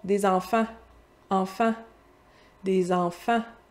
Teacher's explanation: Le an, ça vient du son A. Fait que c'est mon A qui est nasalisé.